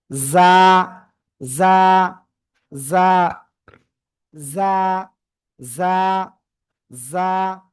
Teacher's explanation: এই যা অক্ষরটা জিহ্বার আগা সামনের নিচে দুই দাতের পেটও আগার সাথে লাগিয়ে এক আলিফটা নিয়ে উচ্চারণ করব